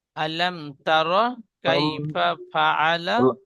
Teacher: সাকিনের পরে তা এসেছে, ইজহারের স্বাভাবিক ভাবে বিনা গুন্না পড়তে হবে। আলাম, আলাম বলে গুন্না করব না।